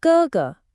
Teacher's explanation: First tone, then neutral.